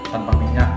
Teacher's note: penutur mengubah bunyi fonem konsonan N menjadi konsonan M.